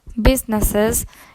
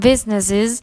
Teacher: general American speakers have a preference in pronunciation for the suffix with a central neutral short vowel schwa and the alveolar fricative z, instead of British pronunciation with a front centralized short vowel e and the alveolar fricative. For example, in the word businesses in general American English and businesses in British pronunciation.